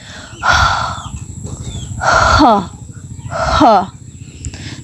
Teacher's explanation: The H sound is unvoiced, and the vocal cord do not vibrate during the production of this sound. Just relax like you are exhaling the carbon dioxide air to your body, like ha, ha.